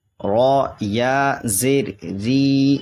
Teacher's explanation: یہ را باریک ہوگی کیونکہ را پہ زیر ہے